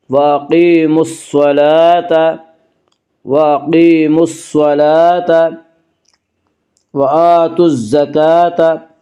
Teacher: وَأَقِيمُوا الصَّلَاةَ، وَأَقِيمُوا الصَّلَاةَ، لام کے اوپر کھڑا زبر ہے، کھڑا زبر کو ایک الف کے برابر کھینچ کر پڑھیں گے